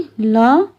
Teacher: ल अक्षर का उच्चारण करते समय भी वायु जीभ के दोनों तरफ से निकलती है। इसलिए इसे पार्श्विक ध्वनि माना जाता है।